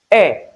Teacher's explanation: E is described as short mid high front unrounded vowel